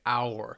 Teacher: begins with the letter H, but there is no H sound